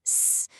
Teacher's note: For an S sound, s, your tongue squeezes the air into a tiny narrow channel.